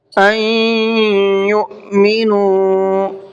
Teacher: ان یؤمنوا، این کے اندر دیکھیے یہاں پر نون ساکن ہے، اور نون ساکن کے بعد میں یا آ رہا ہے، تو یہ ادغام یرملون کا قاعدہ ہے، یہاں پر غنہ کر کے پڑھیں گے